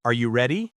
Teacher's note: The important part is the stress on ready and the rising tone at the end.